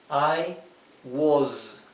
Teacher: Y aquí nuevamente la s, que sea una s vibrada.